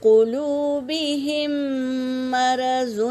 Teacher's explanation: یہاں پر بھی واو ساکن سے پہلے پیش واو مدہ، یہاں پر دیکھو یا ساکن سے پہلے زیر یا مدہ، اور یہاں پر میم ساکن ہے اس کے بعد میم آیا ہے، تو پہلے میم کو دوسرے میم میں ملا کر غنّے کے ساتھ پڑھیں گے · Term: ادغام شفوی